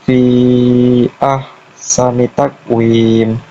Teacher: di fi ya-nya itu ada harokat panjang, lalu depannya itu ada hamzah. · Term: mat jaiz musafil